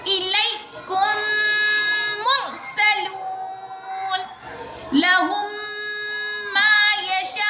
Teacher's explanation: میم ساکین کے بعد میم آ رہا ہے اور میم پر تشدید ہے تو غنّہ ہوگا. میم پر تشدید ہے تو بھی غنّہ ہوگا. · میم ساکین کے بعد میم آئے تو میم کو میم سے ملا کر غنّے کے ساتھ پڑھیں گے. یہ ادغام شفوی ہے.